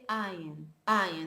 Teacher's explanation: many Hebrew speakers today don't pronounce actually the ayin as a glottal sound, but they pronounce it as a vowel, Okay, so if you go to Tel Aviv and you hear somebody speaking about his eye, he wouldn't say ayin, he would say ayin, ayin.